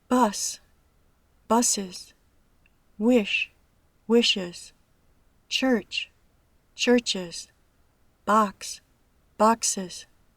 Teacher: Y siendo que la E es una vocal, un sonido sonoro, la S se pronuncia con un sonido sonoro. La terminación ES añade una sílaba a la palabra, que se pronuncia is.